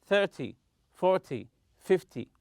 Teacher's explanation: In 10 numbers such as 20 and 30, always stress the first syllable. 30, stress the first syllable.